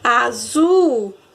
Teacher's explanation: Azul. 2 sílabas e a mais forte ficou no zu. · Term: sílaba tônica